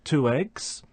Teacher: linking of a final vowel sound with an initial vowel sound either with a linking W sound